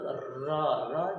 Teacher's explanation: र, आप देखिए जब र का हम उच्चारण करेंगे, र जब र का उच्चारण करें तो र जब कहते हैं तो जीभ जो है ऊपर उठ जाता है और थोड़ी सी रगड़ के साथ आगे आता है, लुढ़क करके आगे आता है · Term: लुंठित व्यंजन